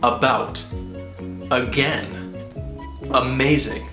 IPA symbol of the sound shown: ə